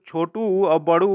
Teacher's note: यह जो होता है ओष्ठ से होता है, जो कि दोनों ओठ के स्पर्श से इसका उच्चारण होता है।